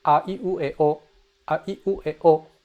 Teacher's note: Low, high, high, low, high. So here I greatly exaggerated the difference in pitches, but like I said, it can be very subtle.